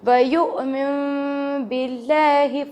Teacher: من پہ 2 سیکنڈ تک غنہ کرنا ہے